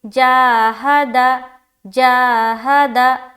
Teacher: اب دیکھیں ہا اور دال دونوں کے اوپر ایک ہی حرکت ہے، زبر کی حرکت ہے، تو دونوں کا اجرا ساتھ میں کریں گے۔ ہادا، ہا دال دونوں کے اوپر زبر کی حرکت ہے، زبر کو جلدی پڑھیں، تھوڑا بھی نہ کھینچے